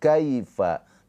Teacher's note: Kalau harfulin dia tidak panjang hanya di ee lembutkan saja cara bacanya. Kaifa tapi enggak dibaca panjang.